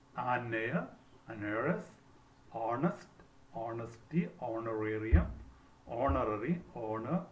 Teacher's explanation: Certain words beginning with the letter, the consonant letter H, remains silent. So the first sound that we listen to will be vowel sounds. So before these words we have to use an.